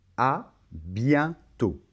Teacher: Et on remarque encore une fois que la lettre T finale ne se prononce pas. Alors ici, la combinaison E et N, ça va se prononcer un, c'est un son nasal